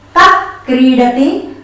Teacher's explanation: Kaha plus Kridati, Kah Kridati. Only we don't pronounce Kaha Kridati like that, not full Visarga, only half Visarga